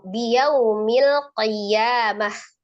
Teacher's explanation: Maka ketika huruf tak marbutoh diwakafkan maka menjadi sukun. Ketika tak marbutoh sukun maka bunyinya menjadi bunyi huruf H ya.